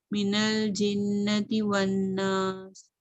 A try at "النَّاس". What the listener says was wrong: سین آپ کا نا مجھے اتنا پرومیننٹ نظر نہیں آیا. ناس ناس ہاں جی, سین کی سیٹی نہیں بلکہ ساؤنڈ ہے نا, یہ ضرور آنی چاہیے.